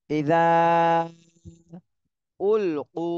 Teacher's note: উতে এক আলিফ টান দিতে হবে, পেশের বামে জজমালা ওয়াও মদের হরফ।